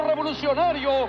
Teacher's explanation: everybody would notice straight away the R, the rolled R of Spanish, becoming 2 or 3 seconds long